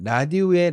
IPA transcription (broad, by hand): lɑdio